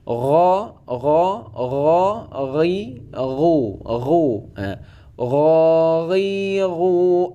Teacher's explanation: dia itu tidak terlalu getar dan tidak qalqalah. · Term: huruf ghain